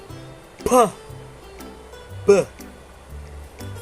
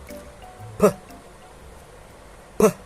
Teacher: You release it with sudden explosion.